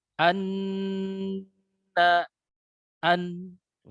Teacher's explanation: huruf nun di sini tidak boleh ditahan juga tidak boleh terlalu diloloskan jadi pertengahan antara itu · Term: tawasuth